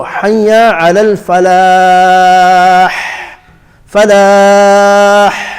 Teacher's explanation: The ha comes from the middle of the throat. That's the makhraj of the ha.